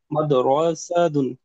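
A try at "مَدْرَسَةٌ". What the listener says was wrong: এই রটা টান হয়ে গেছে, র কি টান হবে ভাই? মাদরাসাতুন, মাদ কলকলা করে, মাদরাসাতুন।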